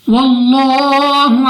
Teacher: لام اف اللہ سے پہلے حرف پر زبر تو اس لام اف اللہ کو پر یعنی موٹا پڑھیں گے، منہ اور آواز کو کھول کر